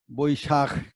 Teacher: বৈশাখ খটা এখানে ধরতে হবে, আমরা ধরি না, অনেক সময় ক হয়ে যায়। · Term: মহাপ্রাণ